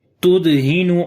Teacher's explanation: On the dal we make qalqala, which is the weak qalqala.